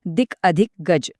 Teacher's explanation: इथे क आणि ग एकत्र येऊन ग तयार झालं, म्हणजे दिग्गज. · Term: व्यंजनसंधी